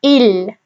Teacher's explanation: So when you say il, the sound mainly comes from the edges, but does have a slight inclination towards the tip of the tongue